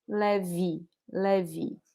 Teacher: Leve is not nasal. The first E is the open one. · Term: open oral E